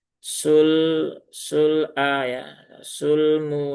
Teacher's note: lamnya jangan ditekan secara berlebihan tapi tunaikan tawasudnya. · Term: lam sukun